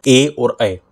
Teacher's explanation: कंठ तालव्य यानी जिनमें कंठ और तालु दोनों का प्रयोग